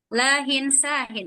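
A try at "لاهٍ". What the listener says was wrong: Lahin. Ya, ahsanti.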